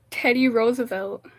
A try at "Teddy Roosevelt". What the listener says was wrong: think the T is silent.